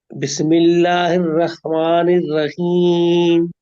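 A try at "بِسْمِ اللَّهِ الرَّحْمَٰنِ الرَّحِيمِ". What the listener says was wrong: ये रा पे तस्दीद है, उसको उसको थोड़ा वक्त लीजिए। रा पे तवसुत है ना, थोड़ा वक्त लेना है।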